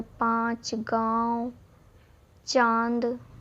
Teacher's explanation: हवा तो मुंह से निकलती हैं और नाक का भी यूज करना पड़ता है यानी नाक से भी बोले जाता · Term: अनुनासिक